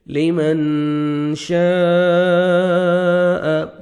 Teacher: اخفا کرنا ہے، نوز میں ساؤنڈ لے کے جائیں گے